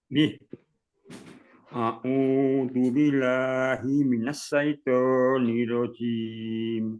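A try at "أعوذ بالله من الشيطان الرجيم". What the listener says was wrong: Nirrojim. Pak, tasdidnya Bapak katakan, Pak.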